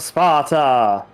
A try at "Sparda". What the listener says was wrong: Not Sparta, Sparda. It's a D.